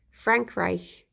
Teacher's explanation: I do a German R, it's all the way back on my soft palate.